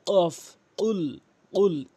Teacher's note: কফটি জিহ্বার গোড়া উপরে তালু থেকে উচ্চারণ করতে হবে